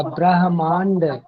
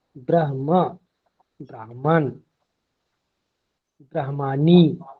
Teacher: पहले ह का उच्चारण होगा